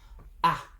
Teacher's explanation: In English, you open your mouth very wide and it's quite short.